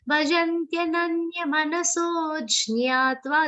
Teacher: The aghat will be a subtle one, not a very prominent aghat, because you have to complete the long sound of so and then give the aghat.